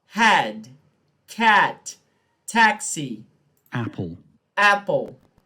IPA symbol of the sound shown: æ